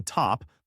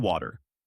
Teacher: it's sharp in top but softer in water almost like a D sound